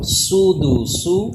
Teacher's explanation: سین پہ سیٹی پیدا ہو